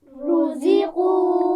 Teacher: اس میں را کو پیش ہے نا تو موٹا بھی پڑھنا ہے، یہ بھی خیال رکھنا ہے.